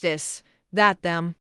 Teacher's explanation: Hard TH, this, that, them. Tongue between teeth, with voice vibration.